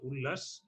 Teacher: ত ও দয়ের পর ল থাকলে ত ও দয়ের স্থলে ল উচ্চারিত হয়